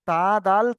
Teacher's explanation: জীবের আগা এবং সামনের উপরের দুই দাঁতের গোড়ার সাথে লাগিয়ে উচ্চারিত হয়